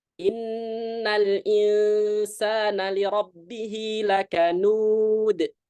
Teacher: Itu kalau kita teoritis berarti inna di sini nahannya lebih lama daripada al-insan. Kenapa? Karena yang satu musyaddad akmal, yang satu kamilah. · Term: gunnah